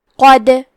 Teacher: دال بھی حروف القلقلہ میں سے ہے، تو ہم یہ حرف کو ہلاتے ہوئے یہ کلمہ کو پڑھیں گے